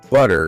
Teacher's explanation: the T sound when it's between vowels often softens into more of a D sound, right? The flap T.